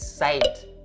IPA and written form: saɪt (sites)